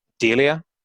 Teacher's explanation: with a rising intonation indicating a question mark at the end